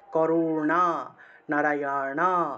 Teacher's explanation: মূর্ধন্য জীব উল্টিয়ে উপরের দিকে স্পর্শ করে উচ্চারণ করতে হয়